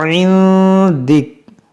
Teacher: नून साकिन के बाद दाल जो हुर्फ इख्फा है तो यहाँ पर हम इख्फा करेंगे